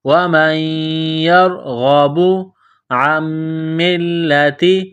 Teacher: میم مشدد ہے تو آواز ناک میں چھپائیں گے، غنہ کریں گے۔ میم کو لام کے ساتھ پلس کرنا ہے، لام کے اوپر تشدید ہے، لام کو دبانا ہے، سختی کرنی ہے۔